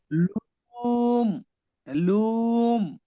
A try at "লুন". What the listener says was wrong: লুম কেন? নুন তাহলে তো দন্তের ন উচ্চারণ হবে, লুন, লুন।